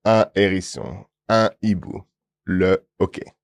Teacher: these are H aspiré, and that's what's blocking the liaison